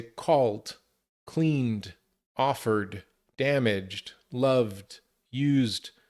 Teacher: Where other consonants like L or N or R or G or V, it sounds more like a D sound. But again, it's fast. We don't separate.